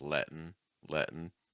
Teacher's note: notice that's a held T, right? Because you have a T before the N.